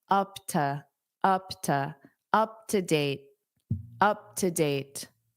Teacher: Is your information on file up to? This to will become unstressed because it's a preposition.